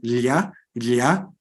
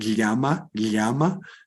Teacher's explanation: o lateral palatal, lha, como vocês conhecem o animal andino llama, é muito comum nas línguas dos Andes